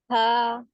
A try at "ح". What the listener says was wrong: کو اور اچھا کریں، ہا بولیں، ہا. یہ بھی ہا لگ رہا ہے. ہا کے بجائے تھوڑا سا اور اس کے اوپر جو ایسی والی ساؤنڈ دیکھیں کبھی ہم کو چشمہ یا گلاس صاف کرنا ہوتا ہے، میں سے ایسی ہوا نکالتے